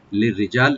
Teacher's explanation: রাটাকে এখানে আমরা হালকা করে পাতলা করে পড়বো, জিমটাকে রাইট দিয়ে একালিফ টানবো, আর লামে কোনো টান নাই, লি বলবো।